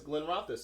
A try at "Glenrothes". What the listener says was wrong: No, you're not. You're not spacing it to be two words. It's the Glenrothes. Glenrothes is not Glenrothes.